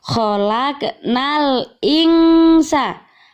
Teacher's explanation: ada nun sukun bertemu dengan huruf Sin ini dinamakan bacaan Ikhfa maka membacanya harus samar-samar